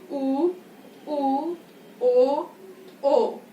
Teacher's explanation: ये जीभ के पीछे वाले भाग से बोले जा रहे हैं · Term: पश्च स्वर